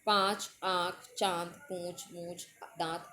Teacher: जब उच्चारण करते हैं तो अंदर से जो वायु है वो मुंह और नासिका यानी कि नाक के द्वारा निकलती है और आ की आवाज़ निकलती है पाँच। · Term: अनुनासिक